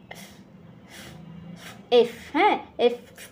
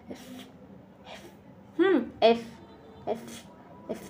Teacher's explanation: আসলে এফ এটার উচ্চারণ হবে উপরের দাঁত নিচের ঠোঁটের সঙ্গে লাগিয়ে। এফ হ্যা এফ পুরোপুরি ফত উচ্চারণ হবে না।